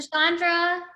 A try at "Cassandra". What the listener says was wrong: CH is silent, but it's. It's like Sandra with the stutter.